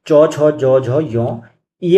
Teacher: जो टी है यानी कि तालव्य यानी कि च वर्ग जो है च, ज, झ, य आती है तालव्य से